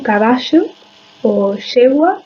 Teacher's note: Se trata de un fonema fricativo prepalatal sonoro tenso y estridente. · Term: pronunciación rehilada